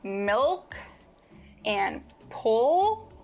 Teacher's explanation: In contrast to the light L, when you produce the dark L, the back of your tongue bunches